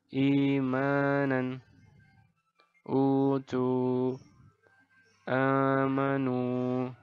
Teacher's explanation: Ini adalah contoh bacaan mad badal, yaitu dipanjangkan 2 harokat.